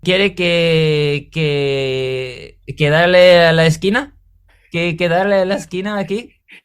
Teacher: I don't think he ever closed his lips one time speaking Spanish to me